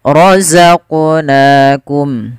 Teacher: ketika membaca huruf qaf ini, huruf qafnya harus mantul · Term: qalqalah